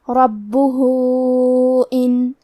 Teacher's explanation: حرف الہا پہ الٹا پیش ہے اور اس پہ مد کا علامہ ہے، یہ مد صلہ کبریٰ ہے، لہذا ہم اپنی آواز 2 سے 4 مد کے برابر لمبی کریں گے